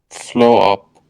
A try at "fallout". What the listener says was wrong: No, not flow. Fall. And it's not fall up, it's fall out.